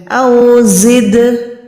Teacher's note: دال ساکن ہے، اس پہ کلکلا کریں